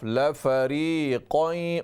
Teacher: मोटा क़ाफ full mouth से